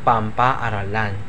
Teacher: dahil sa kasunod na tunog halimbawa pang plus paaralan magiging pampaaralan yung pang yung ng niya ay magiging m kaya magiging pampaaralan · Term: asimilasyong parsyal